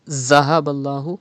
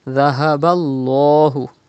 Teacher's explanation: You have to pronounce Dhal without whistle. Do not read Zahaballahu.